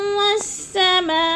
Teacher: والسماء پہ بھی مد ہے، مد متصل ہے، 4 الفی مد ہے، 4 حرکات کے برابر کھینچ کر پڑھنا ہے